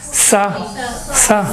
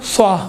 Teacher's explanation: سا ہمیشہ وہی سین کو صاد ادا کرتے ہیں، صاد کو سین، کوئی فرق نہیں کرتے ہیں، جبکہ دونوں میں سیٹی کی آواز ہے۔ فرق یہ ہے سین میں سیٹی کی آواز باریک ہے، صاد میں موٹا ہے، دیکھیں بھاری ہے